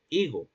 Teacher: Porque en la actualidad no decimos higo con un elemento glotal, sino higo, porque la grafía H en la actualidad remite a un cero fonético